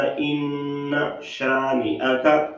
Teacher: بعض لوگ یہاں پر اِنَّا لمبا کر جاتے ہیں، تو لمبا نہیں کرنا، صرف اتنا پڑھنا اِنَّ شَانِئَكَ۔